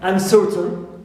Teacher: So certain is stressed, but un is neutral. Also, unfaithful, and is neutral also, and faith is stressed.